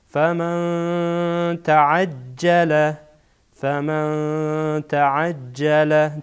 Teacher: بعد از نون ساکن تا آمده و تا از حروف اخفا هست. نون ساکن را اخفا میکنیم.